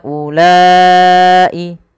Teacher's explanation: Panjangkan huruf ha sepanjang empat harakat dan panjangkanlah huruf la sepanjang empat harakat pula atau lima harakat untuk kedua-duanya. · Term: mad jaiz munfasil